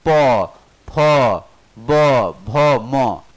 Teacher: दोनों होंठ सट रहा है। जब होंठ सट रहा है तो मतलब होस्ट, होंठ सट रहा है तो ओष्ठ, कोई दिक्कत नहीं।